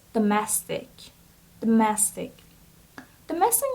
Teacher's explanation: So the stress is on the second syllable, so it's domestic.